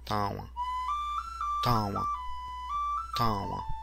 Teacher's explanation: This sound is similar to the English W, but with the air going through the nose and the mouth at the same time. This is known as a nasalization.